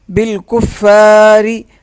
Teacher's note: فا کو سخت پڑھیں گے اور ایک الف کے برابر کھینچ کے پڑھیں گے